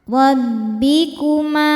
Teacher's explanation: Ro dibaca tafkhim karena berharokat di atas yaitu harokat fathah. Maka ro-nya tebal.